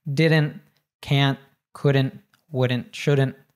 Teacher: Anytime we have a contraction that NT, again, we tend to cut off the T sound.